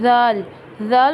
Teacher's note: जाल बहुत नरमी से अदा होगा और तभी सही अदा होगा जब जुबान की नोक सामने वाले दांतों के किनारे पर लगेगी